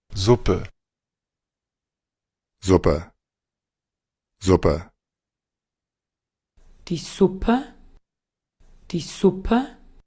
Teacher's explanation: si ustedes escuchan aquí el que nos dicen que es el acento de Austria, notarán que sí, lo dice con una S silbante.